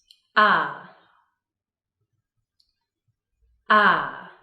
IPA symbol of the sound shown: ʌ